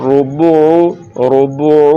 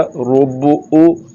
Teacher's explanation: اگر پڑھ دیا روبو او تو ابھی عین نہیں پڑھا جا رہا بلکہ حمزہ پڑھا جا رہا ہے